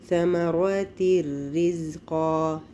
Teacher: یہاں پر ادغام کامل ہے، نون کی آواز بالکل نہیں آئے گی، نون غائب ہو جائے گا